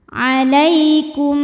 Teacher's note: Lai, ada harfu lin. Sebab ada ya sukun didahului baris fathah. Maka dibacanya lembut. Alaikum, kemudian ada hukum idgham mimi.